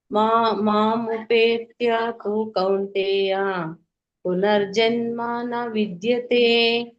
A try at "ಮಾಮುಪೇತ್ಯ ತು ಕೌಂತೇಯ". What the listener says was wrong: ಅಲ್ಲಿ ನೀವು ಗ್ಯಾಪ್ ಕೊಡಿ. ಗ್ಯಾಪ್ ಕೊಡದೇ ಇದ್ರೆ ನಿಮ್ಗೆ ಗೊಂದಲ ಆಗುತ್ತೆ. ಮಾಮುಪೇತ್ಯ ತು ಕೌಂತೇಯ. ತು ಅನ್ನುವಂತ ಪದ ಸಪರೇಟ್ ಪದ ಅದು.